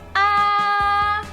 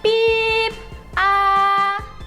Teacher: é bem alto, agudo e contínuo, né? Então, esse acento indica essa entonação.